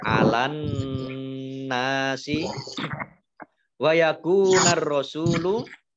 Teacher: alif lamnya alif lam samsiyah, karena tidak dibaca, langsung masuk ke huruf berikutnya yaitu roh, ditandai dengan rohnya ada tasdidnya.